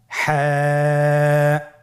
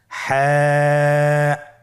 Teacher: হা হরফটি কীভাবে উচ্চারিত হবে? হা হরফটি উচ্চারিত হবে কণ্ঠনালীর মধ্যখান হতে। গলা চিপে ধরে আপনি উচ্চারণ করুন।